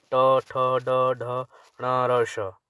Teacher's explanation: और मूर्धा होते हैं जो तालू से थोड़ा सा आगे, जहाँ ऊपर जीभ हम फोल्ड करते हैं, जब जीभ ऊपर टच करती है तालू से थोड़ा सा आगे, वहाँ पे, तो वहाँ से जो जिनका उच्चारण होता है ट, ठ, ड, ढ, ण, र, श।